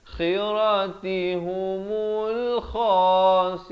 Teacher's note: Kha ni di hujung kerongkong.